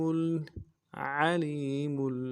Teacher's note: عین کو موٹا ادا کرنا ہے، لام کو یا کے ساتھ ملانا ہے، یا مدہ ہے، ایک الف دال میں کھینچیں گے